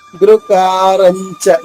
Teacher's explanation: మొదటి చరణము గుకారంచ గుణాతీతో గుకారంచ కా దీర్ఘంగా రా తర్వాత అనుసరించారణ జ్ఞాల చెప్పాలి, రంచ కాదు. గుకారంచ గుకారన్ నాలుక మధ్య పైన టచ్ చేస్తే వస్తుంది. గుకారంచ గుణాతీతో గుణాతీతో అణాతీతో మూడు కూడా దీర్ఘాక్షరాలు.